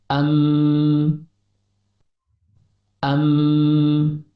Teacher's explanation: Huruf mim keluar dari pertemuan antara bibir bawah dengan bibir atas yang disertai gunnah pada rongga hidung.